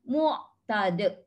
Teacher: Okey, ta itu jaga, lepas tu de itu qalqalah kubra. Qalqalah kubra ni memang biasanya dia duduk di hujung kalimah ataupun dia duduk di hujung perkataan, bukan di hujung ayat, bukan di hujung baris.